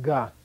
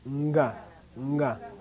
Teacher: Prenasal. Slight sound, N sound before it.